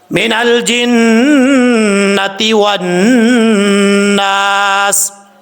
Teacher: یہاں پر نون کے اوپر شد ہے، غنہ کیا جائے گا، ایک الف کی مقدار، اور والناس، واؤ کو پڑھتے وقت ہونٹ گول کریں گے، واؤ کو جب نون سے ملائیں گے بیچ میں الف لام گر جائے گا